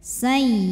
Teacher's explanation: ya tasydidnya dibaca dengan naber. Jadi ada hentakan sedikit ya. Jangan ditahan ya, karena sebelumnya bukan tanwin, bukan nun sukun, jadi bukan idgham bil gunnah.